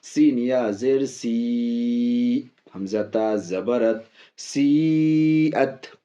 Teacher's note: اب یہاں دیکھیے یا حروف مدہ، یا ساکن سے پہلے زیر، اس لیے یا حروف مدہ. یا حروف مدہ کے بعد حمزہ، حمزہ اسی کلمے میں، اس لیے یہ بھی مد متصل بڑی مد کھینچ کے بولیں گے